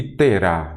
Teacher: novamente a última sílaba é a tônica, é aquela acentuada, oxítona